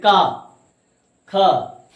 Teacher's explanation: कंठ ध्वनियां हैं तो उच्चारण कंठ से करते हैं, गले से करते हैं, जैसे का ख।